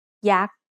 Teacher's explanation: Yak is high tone because it has a low class consonant and a dead syllable with a short vowel. Yoyak, Sara'a, written with ไม้หันอากาศ กอไก่ สอฤาษี with a Garan, Yak.